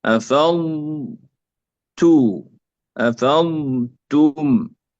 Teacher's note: أولا ننطق الضاد مع الاستطالة